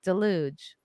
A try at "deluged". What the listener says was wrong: deluged. It's not deluge.